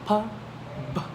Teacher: the stops are these sounds are made by completely stopping the airflow and then releasing it with a small burst